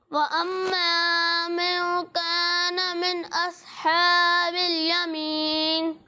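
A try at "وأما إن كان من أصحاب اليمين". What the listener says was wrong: سب سے پہلے آپ یہ دیکھیں کہ یہاں من نہیں لکھا ہوا، یہ ان لکھا ہوا. ٹھیک ہے، ان کانا، من کانا پڑھیں گے تو غلط ہو جائے گا. ٹھیک ہے، اور دوسری بات یہ کہ جہاں آپ غنہ کرتے ہیں نا تو وہاں پر آپ ہونٹوں کو گول نہ کریں.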